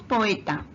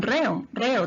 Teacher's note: dos vocales que aparecen juntas, se pronuncian en sílabas distintas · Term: hiato